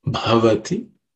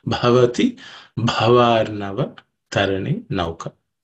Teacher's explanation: the first letter Bha, is the fourth letter in the Pa class of sound, so it has to be aspirated